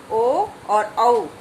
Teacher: ओदौतो हो कंठोष्ठम, यानी कि ओ और औ दोनों वर्ण कंठ और होठों के मेल से उच्चारित किए जाते हैं